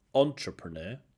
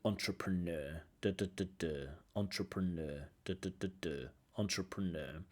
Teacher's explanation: the stress on the last syllable